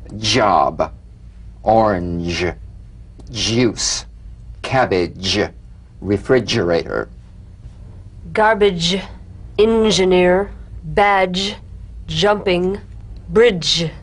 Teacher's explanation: energetic staccato treatment and feel a voiced percussive sensation flowing from the hard palate onto the gum Ridge